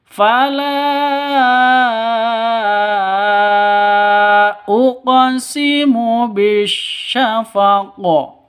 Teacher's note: Qofnya huruf terakhir harus disukunkan. Cara bacanya bisyafaqo harus dipantulkan ke huruf qof-nya. Kenapa? Karena ini namanya qalqalah. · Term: qalqalah kubro